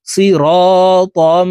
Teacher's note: এই তানউইনওয়ালা তটি তাসদিদওয়ালা মিমের সাথে গুন্নার সহিত মিলাইয়া পড়ব